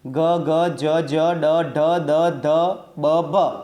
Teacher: જે વર્ણના ઉચ્ચારણમાં કોમળતાનો રણકો હોય તેને ઘોષ વ્યંજન કહીએ